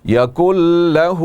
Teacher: نون ساکن کے بعد حروف یرملون میں سے یہاں پر لام ہے, تو ادغام ہوگا بغیر غنہ کے